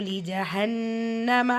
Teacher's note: ஃபேனு கேஃபில் அலிஃப் மதா நூனில் வாவுமதா ரெண்டுலேயுமே 2 ஹரக்கத்தளவு நீட்டம் கொடுத்து ஓதணும். லீ ஜஹன்னம நூன் முஷத்தா குன்னா செஞ்சு ஓதணும்